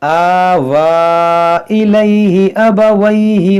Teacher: और यहाँ पर जो मद है ये मद मुनफसिल है, खड़ा ज़बर के बाद हमज़ा दूसरे कलमे में है, तो खींचेंगे इसको